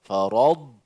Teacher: huruf dad jangan bagi qalqalah. Dad dimatikan bunyinya.